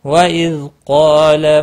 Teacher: وَإِذْ ذال ساکن کو ہلانا نہیں، قاف اور الف دونوں پور پڑے جائیں گے